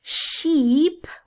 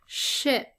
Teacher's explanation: So sheep with the corners of my mouth tensed up has a much different meaning than ship, where I kind of let things fall back a little bit more.